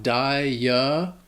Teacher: little confusing because it is three syllables it's not two and the first syllable has that long i sound that dye followed by the schwa